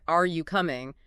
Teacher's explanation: Your voice naturally rises at the end, right?